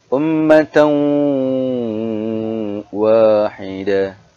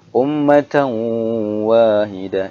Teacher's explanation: Ketika masuk dia harus dengung pada huruf ta. Ini ada tanwin an bertemu dengan waw yang bertasydid, dia harus dibaca idgham.